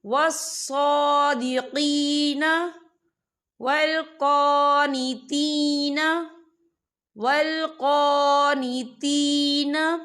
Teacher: یہاں پہ یا مدہ ہو رہا ہے، یا ساکن سے پہلے زیر ہے، تو ہم یہاں 2 یا 3 حرکت کے برابر کھینچے پڑھیں گے۔